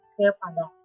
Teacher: suku Batak dominan mengucapkan kata E dengan berat dan ditekan dalam tenggorokan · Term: logat khusus